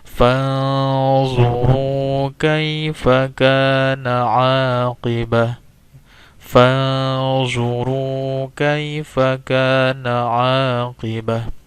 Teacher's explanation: Yang kedua adalah ada di sini hukum tajwid nun sukun bertemu dengan zo. Ya, nun sukun bertemu dengan zo. Ini hukum tajwidnya adalah ikhfa. Ikhfa hakiki. Ya, jadi bacanya didengungkan.